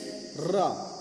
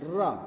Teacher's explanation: जीभ की नोक को बेलन की तरह कुछ लपेट कर या लुंठित द्वार तालु का स्पर्श कराकर यह ध्वनि उच्चारण में आती है। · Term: लुंठित व्यंजन